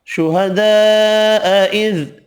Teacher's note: بڑی مد 5 الف کی مقدار میں کھینچ کر پڑھیں گے